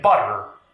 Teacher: So t will be pronounced like t at the beginning of a stressed syllable, like in team, but as a flat t if it's not quite at the beginning, like in start, or a flappy sound like d if it's between a stressed and unstressed vowel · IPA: [bʌɾɚ]